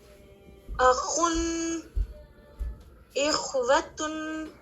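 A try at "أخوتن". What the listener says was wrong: Very good, الحمد للہ.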